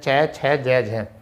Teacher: तो चय जो होते हैं वो स्पर्शी भी होते हैं और संघर्षी भी। इनका उच्चारण करते समय जो है स्वर तंत्रिकाओं में कंपन भी आता है, घर्षण भी उष्मा भी पैदा होती है, और साथ ही साथ जो है हमारे ये किसी न किसी एक पेट भाग से उच्चारित भी होते हैं।